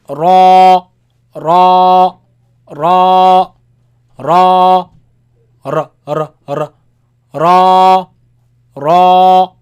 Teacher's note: the tongue touches top and you force the sound out of your mouth right between your tongue and the roof